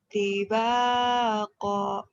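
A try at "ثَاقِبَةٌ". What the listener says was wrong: Tiba kok gitu, gak boleh panjang ya, karena kita kosar, bacaan pendek.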